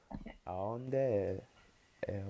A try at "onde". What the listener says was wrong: Aonde is Spanish. Onde, not aonde.